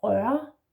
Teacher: It's the same sound that you have in the word børn, for example, yeah? So you have rør, R in the throat, and the next R, you don't say it. This is an R that just influences the slashed O, so to speak, yeah?